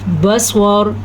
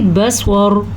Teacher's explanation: سواد کو پر پڑھنا ہے، را کو پر پڑھنا ہے